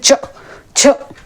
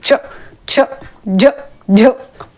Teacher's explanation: इसमें स्पर्श होते हुए हवा संघर्षी होती है। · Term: स्पर्श संघर्षी